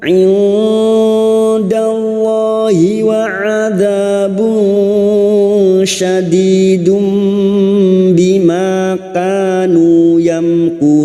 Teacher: Mim sukun dibaca jelas tanpa mendengung. Kurun bertemunya mat dengan huruf hidup yang dibaca wakaf mad arid li sukun, 4 harokat kita panjangkan.